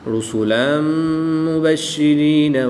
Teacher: میم حروف یرملون میں سے ہے تو یہاں پر ادغام مع الغنہ ہوگا، غنہ کر کے پڑھیں گے